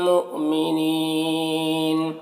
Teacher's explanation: مؤمنین یہاں پر حمزہ ساکنہ ہے، جھٹکا لگے گا۔ نی میں یا مدہ ہے، اسے ایک الف کے برابر کھینچیں گے۔